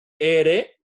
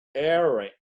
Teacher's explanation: casi con la parte de abajo de la lengua el paladar la era del español se produce con la punta de la lengua en la cresta alveolar y la era del inglés no